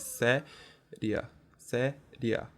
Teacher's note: E separando as sílabas da palavra séria, a gente vê que tem um ditongo, e nesse caso é um ditongo crescente, porque o i é pronunciado com menos intensidade do que o a